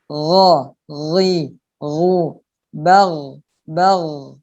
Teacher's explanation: Nah, perbedaannya juga sama. Kalau ghain itu tidak terdengar ada hamas, tidak ada suara nafas yang berdesis.